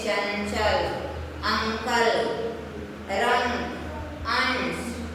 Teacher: तो अनुस्वार किसे कहते हैं, अनुस्वार का उच्चारण करते समय वायु कहाँ से निकलती है, नाक से निकलती है।